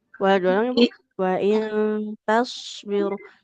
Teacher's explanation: Huruf shadnya tebal, tapi jangan lupa untuk mengalirkan suaranya. Jangan terlalu singkat aliran suaranya.